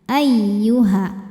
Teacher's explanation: Masuk ke ya tasydid pakaikan nabr. Naikkan intonasi suara tanpa menahannya. Ayyuha. Jadi kalau ada ya tasydid tidak didahului tanwin atau nun sukun jangan nahan. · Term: naber